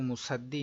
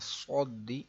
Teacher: صود موٹا پڑھنا ہے، حروف مستعلیہ کا ہے